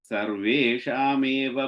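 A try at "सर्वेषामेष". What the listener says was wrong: That fourth line, first word, sarveshamesha. You said va, sha. Sarveshamesha. Can you change it to sha?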